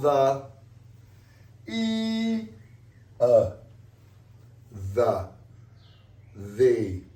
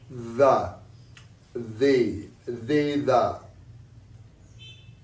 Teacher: We put our tongue between our teeth and we let air come out.